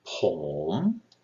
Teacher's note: start your regular voice, go down a little bit, and then come up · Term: rising